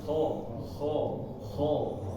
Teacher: Jadi pangkal belakang lidah ini naik ya, agak naik karena pengucapannya tebal.